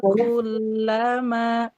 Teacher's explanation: Nah, Bu lihat lam tasydid. Jangan awakullama, itu lam tasydidnya tawasud kan? Tawasud itu antara mengalir dan tertahan. Kullama tuh, jadi dia tidak terburu-buru.